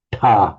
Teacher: the retroflex unvoiced doubled aspirated ta